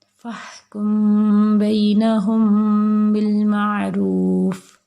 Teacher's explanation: میم کو ادا کرتے وقت دونوں ہونٹوں کے خشکی والے حصے کو نرمی والے حصے کے ساتھ ملا کر بقدر ایک الف غنہ کریں. کیسے کہ جب میم کو ادا کرتے ہیں تو اس کو ادا کرتے وقت دونوں ہونٹوں کے جو خشکی والے حصے ہیں ان کو نرمی والے حصے سے کے ساتھ ملا کر، ٹھیک ہے، بقدر ایک الف غنہ کریں گے. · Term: اخفا